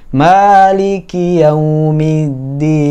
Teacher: di huruf ma-nya juga harusnya dipanjangkan 2 harokat